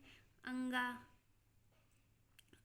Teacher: अनुस्वार जो हमारे नाक की सहायता से निकलता है